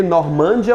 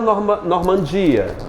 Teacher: A mais forte é o de.